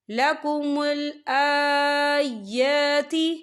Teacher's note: یہاں پر کھڑی حرکات ہے تو ہم اسے 2 یا 3 حرکت کے برابر کھینچے پڑھیں گے